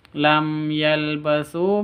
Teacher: mim sukun di awal bertemu dengan ya, bacaan izhar safawi, bacanya jelas tanpa dengung.